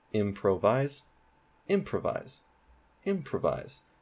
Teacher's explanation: the main stress is at the beginning of the word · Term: primary stress